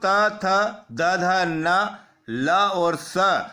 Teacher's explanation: जब हम इन वर्णों का उच्चारण करते हैं तो हमारी जीवा दांतों में लगती है, यानी दांतों को स्पर्श करती है। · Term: दंत्य वर्ण